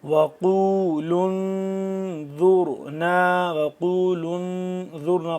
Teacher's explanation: قاف واو پیش قو، قاف کو موٹا پڑھیں گے، لام آگے مل رہا ہے، لام نون پیش لون، نون ساکن ہے تو یہاں پہ ہم اخفا کریں گے، یہ واو ساکن ہے، پڑھا نہیں جا رہا، ویسے ہی لکھا ہوا ہے پڑھا نہیں جا رہا، الف بھی ویسا ہی لکھا ہوا ہے پڑھا نہیں جا رہا۔